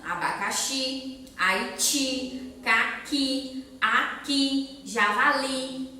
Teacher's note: Todos eles, a última é a mais forte. Então, todos terminam em I. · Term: sílaba mais forte